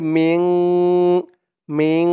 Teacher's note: এই দেখুন, নুন সাকিনের পরে ইকফার 15 হরফের এক হরফ শিন আসছে, তাই এখানে ইকফা অর্থাৎ নাকের ভিতরে লুকিয়ে গুন্না করে পড়তে হবে